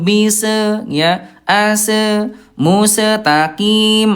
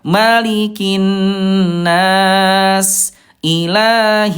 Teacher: huruf sin ayah bunda. Dia lemah mengalir suaranya mengalir ya. As lemah ya.